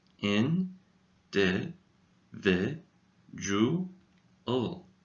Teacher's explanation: Notice the 4th syllable is not pronounced do. It is pronounced ju.